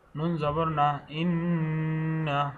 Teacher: হরকতের পরে নুনের উপরে তাজদিদের জন্য ওয়াজিব গুণনা হবে